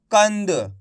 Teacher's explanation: इसका उच्चारण नाक से निकलता है। तो अपन को अनुस्वार की मात्रा बोल के ही पढ़ना है।